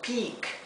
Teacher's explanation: Recuerden que la E con la A se pronuncia como una I larga